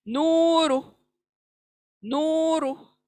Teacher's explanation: नू को खींचना है, रू को कट ऑफ करना है, साउंड को कट ऑफ करना है, खींचना नहीं है। नूरू, ऐसा खींचना नहीं है।